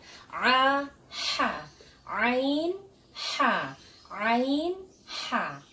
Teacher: tenggorokan bagian tengah, yaitu di daerah epiglotis atau katup tenggorokan yang bertemu dengan dinding tenggorokan. Keluar huruf ain dan ha.